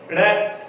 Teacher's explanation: ड़ का उच्चारण करेंगे, एक बार जिह्वा हमारी तालू को टच करेगी, उसके बाद में नीचे आएगी, इसलिए हम इनको उत्तक्षिप्त व्यंजन बोलते हैं।